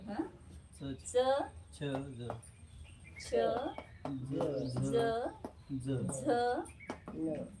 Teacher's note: जीभ तालुला चिकटते तर हे च छ ज झ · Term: तालव्य